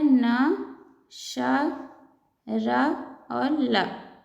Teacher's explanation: दंतमूल या वत्स व्यंजन, ये होता है न, श, र और ल। इनका उच्चारण दांतों के ऊपर वाले हिस्से में जीभ टच होने पर होता है, इसलिए इन्हें वत्स या दंतमूल व्यंजन बोलते हैं।